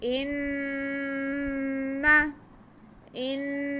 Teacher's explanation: हमज़ा का ज़ेर हम नून के साथ मिला के नून पे गुन्ना करते हुए पढ़ेंगे क्योंकि नून मुशद्दद पे हमेशा गुन्ना होता है। इन्ना, गुन्ना हमने एक अलिफ के बराबर करना है और नून को खींचना बिल्कुल भी नहीं है।